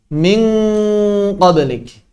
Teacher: Ketika bertemu dengan qaf, suaranya mirip kaf, tapi tebal.